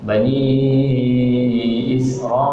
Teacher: huruf mad bertemu dengan hamzah dalam satu perkataan, maka namanya mad wajib muttasil, dibaca dengan 4 harakat